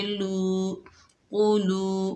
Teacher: آگے واو ساکن ہے، یہ واو مدہ ہے، ایک الف کی مقدار کھینچ کر پڑھیں گے